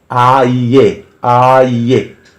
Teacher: ए आप हथेली अपने मुंह के सामने रख लीजिए आइए आइए उच्चारण कीजिएगा तो गर्म हवा के तीन झटके आपके हथेली को टच करेंगे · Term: त्रि अक्षरी शब्द